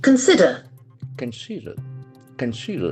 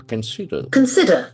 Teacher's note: So there are three syllables. Consider. Consider. Consider. The accent falls on the second syllable.